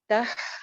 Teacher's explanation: ہا کی آواز چلتی ہوئی